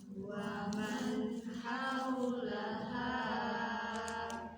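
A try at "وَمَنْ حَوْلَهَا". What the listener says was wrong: Panjang deui. Mudah ngelagam jadi kependekan ya. Kependekan ya kalimatnya ya. Wala saufa yarda wa man haulaha.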